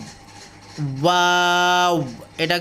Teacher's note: এটা কিন্তু মুখ ঠোঁটটায় পুরো গোল করতে চেষ্টা করবেন।